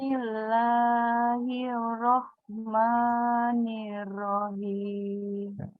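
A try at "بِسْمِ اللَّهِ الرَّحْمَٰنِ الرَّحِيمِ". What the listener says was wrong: Tasdidnya jangan dilupakan ya Bu. Ada tasdid. Nah, di sini ada tasdid ya. Ar-Rahman dengan Ar-Rahim. Bismillahirrahmanirrahim.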